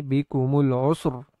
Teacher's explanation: را ساکنہ بالوقف کو پر پڑھیں گے